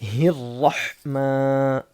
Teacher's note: یہاں پر را موٹا ہونا ہے، را منہ بھر کے پڑھنا ہے